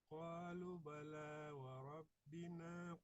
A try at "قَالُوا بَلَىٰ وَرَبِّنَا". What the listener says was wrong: Kalimat qalu baca dengan mat ya, dibaca panjang.